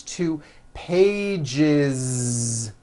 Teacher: Okay, so let's look at the word page, for example, which ends in a voiced sound. One page becomes two pages with that voiced Z. Two pages. It's not two pages, unvoiced, no.